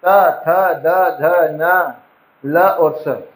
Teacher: जब आप इन्हें उच्चारित करोगे आपकी जिह्वा आपके दांतों को स्पर्श करेगी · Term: दंत्य